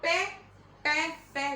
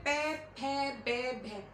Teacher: देखो होठ हमारे टच हो रहे हैं